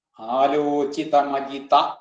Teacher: ആലോചിതം അജിത കൂടി വരുമ്പോഴ് ആലോചിതം എന്നുള്ള അനുസ്വാരം മകാരായിട്ട് ആലോചിതമജിത എന്നാവും.